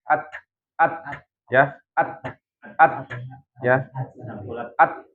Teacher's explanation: Ujung lidah bertemu dengan pangkal gigi seri bagian atas gitu. Jadi at-nya itu ketika ujung lidahnya itu lepas dari pangkalnya. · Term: hams